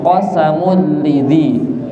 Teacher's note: tanwin ketemu lam namanya idgham bila ghunna